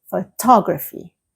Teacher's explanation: Photography, the stress moves to the second part of the word